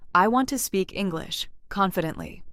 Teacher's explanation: The stronger words are want, speak, English, confidently. The smaller linking words are softer. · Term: sentence stress